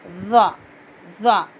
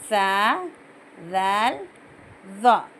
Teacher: ये 3 लेटर्स है, सा, ज़ाल, ज़ाल, ज़ाल, ज़ाल नहीं, ज़ाल, और तो के बाद वाला ज़ौ, ज़ौ, ज़ोए नहीं, ज़ौ भी नहीं, ज़ौ। ज़बान थोड़ी सी एक चावल के दाने जितनी बाहर निकाल के बोलना